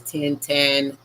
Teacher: T unvoiced and aspired as in English ten